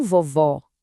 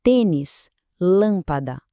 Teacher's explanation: O som parece que vem mais do fundo, mais fechadinho. Essa é a mágica do circunflexo.